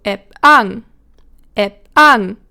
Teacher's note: If the P is at the end of a syllable, same for the K and the T, by the way, then it is unreleased, which basically means you form it in your mouth, but you don't really do the sound then. So the sound is there, it is not left out, so you don't not say it, but it is unreleased.